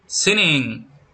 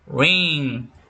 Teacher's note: the back of the tongue touch and soft part of the roof of your mouth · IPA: /ŋ/